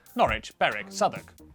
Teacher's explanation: W at the start of the final syllable is silent.